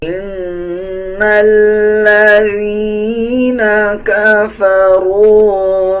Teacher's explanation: نون کے اوپر شد ہے، غنہ کیا جائے گا اور غننے کی آواز کو ناک سے نکالا جائے گا